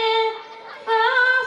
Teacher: ফায়ের মাখরাজ নিচের ঠোঁটের পেট ওপরের দাঁতের আগা লাগিয়ে ফা সহি হয়ে আসবে।